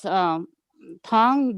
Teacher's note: that's a rising tone with a long vowel